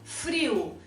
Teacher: ou seja a vogal o passa a ter som de u